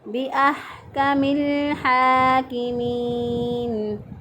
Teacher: یہ الف درمیان میں جو الف ہے یہ پڑھنے میں نہیں آئے گا